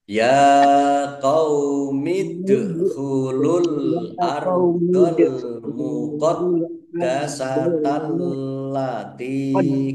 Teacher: Ya qaumidkhulul ardh, ya fathah berdiri mat tabi'i panjang 2 harokat, dal sukun bacaan qalqalah dibaca memantul ditampakkan pantulannya, al ardh alif lam qamariyah ditandai lamnya dibaca sukun, al muqaddasata alif lamnya juga alif lam qamariyah ditandai lamnya dibaca sukun, dalnya dibaca double, ada tasdidnya, ditekan biar tampak doublenya.